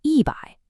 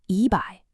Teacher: The character for 1, E, is natively a first tone. However, when it comes before a fourth tone syllable, like bai, the tone on E actually changes to a rising second tone. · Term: tone change